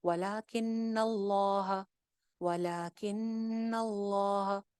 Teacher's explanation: नून पे गुन्ना कर रही हूँ, फिर मैं आगे ज्वाइन कर रही हूँ।